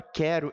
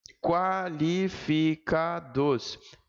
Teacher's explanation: Vejam que na palavra quero, eu não falo o som do U? Falo não. Não falo o som do U. Mas na palavra qualificados eu falo.